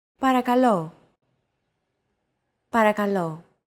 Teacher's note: to English don't forget that words get accentuated in Greek so make sure to stress that final syllable with the accent mark